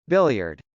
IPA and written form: bˈɪljɚd (billiard)